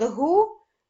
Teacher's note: легше Зробити звукову схему Отже слово Гуцули Ми поділяємо гугу цю вимовляючи перший склад гу Ми чуємо твердий приголосний і звук у голосний